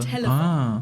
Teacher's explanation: a light L that is more pronounced with the tip of your tongue.